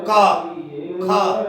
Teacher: का और खा केवल 2 अक्षर होते हैं, ये जीवा मूल्य होते हैं